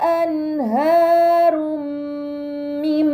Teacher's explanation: dhamahtain dibaca secara melebur dengan gunnah yang dipanjangkan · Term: idgham bi gunnah